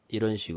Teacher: 'pick up' 의 경우 , 앞 의 소리 가 약해져서 합쳐 지고 'pickup' 으로 발음 됩니다